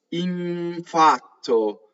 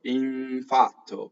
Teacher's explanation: So the N assimilates, infatto, right? So you nasalize the N first, and then you make it with the bottom lip. So it's as smooth as possible. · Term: assimilation